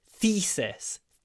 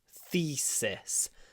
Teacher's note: because we have the I between th and s, two unvoiced consonants, it kind of becomes thesis. Thesis, without using our full voice.